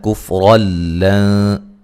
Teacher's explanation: یہاں را کو موٹا ادا کریں گے، اور نون تنوین کا ادغام بلا غنہ ہے